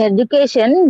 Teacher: already mentioned in the word education isn't that yes sir yes in education the third syllable that is the primary accent obviously the first character secondary accent sir yes yes yes yes